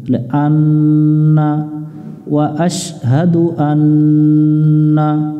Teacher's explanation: নুনের উপরে তাসদিদ আছে, এটা ওয়াজিব গুন্না করতে হবে, বাতি চিহ্ন দেখে আমরা গুন্না করে নিব।